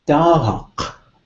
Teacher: it's a falling tone, so you would say doc if you were old school Southern Tlingit, and some transitional Tlingit, but it's usually the true Southern Tlingits that use that falling tone, what the old timers would call sing-songy Tlingit.